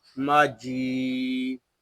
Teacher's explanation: कुरआनुम, मीम ज़बर मा, जीम या ज़ेर जी, माजी। यहाँ जीम को हम एक अलिफ तक खींच कर पढ़ेंगे क्योंकि यहाँ या मद्दा हो रहा है